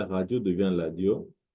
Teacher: Le R en lingala se prononce L, radio devient ladio.